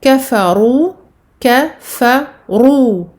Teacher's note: ici on a un ra mufakhama, donc emphatique, car ce ra possède une dhamma